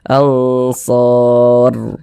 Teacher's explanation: maka huruf ro sukunnya dibaca tebal, baca tabkhim. Sehingga tebalkan huruf ro-nya. Ansor. Nah, sehingga pangkal lisan kita naik terangkat ke atas ketika kita mengucapkannya.